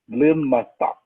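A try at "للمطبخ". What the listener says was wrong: Mutbach. To work on that cha. It's way back in the back of the throat. It's cha. Little matbach.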